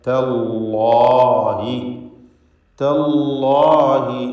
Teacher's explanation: തല്ലാഹി അള്ളാഹ് എന്ന ഇസ്മുൽ ജലാലയ്ക്ക് തഫ്ഖീം കൊടുക്കണം. ഇവിടെ ഇസ്മുൽ ജലാലയിലെ ലാമിന്, കാരണം അതിൻ്റെ തൊട്ടുമുമ്പിൽ ഫത്ഹാണ് ഉച്ചരിക്കുന്നത്.